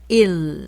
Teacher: 영어에서 L 사운드를 생각하시면서 1 하면서 혀를 붙이세요. 입천장에.